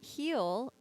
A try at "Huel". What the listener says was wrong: You say it like heel. I think it's like fuel with an H. Huel. It's an H. It's Huel.